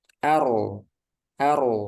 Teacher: ro sukun sebelumnya berharakat fathah huruf berharakat fathah ar ar nah ini r-nya dibaca tebal